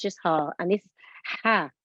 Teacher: Pronounced from the middle of the throat, air escapes slightly. It is a sharp release of air, one of the 6 letters of the throat. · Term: big ha